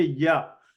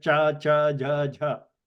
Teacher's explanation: you see that the tongue is by the side of the talu, but not making contact like cha, cha, ja, ja. Ya is very slight contact.